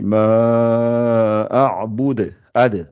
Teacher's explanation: il faut qu'il y ait le qalqala, comme ça rebondit. Ad, il faut que ça fasse ad.